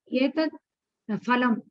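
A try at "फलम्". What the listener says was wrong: It is phalam, not phalam. Fa is not there in Sanskrit.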